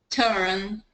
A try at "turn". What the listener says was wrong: Keep it in one syllable. Turn.